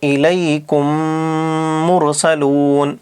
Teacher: تو میم ساکین کے بعد میم آنے کی وجہ سے اس میم کو اس میم میں جوڑ کر ادغام کر دیں گے، ادغام کر کے غنہ کے ساتھ پڑھیں گے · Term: ادغام شفوی